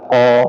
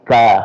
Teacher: di lidah paling belakang qo ya kemudian di depan sedikit ka ya ka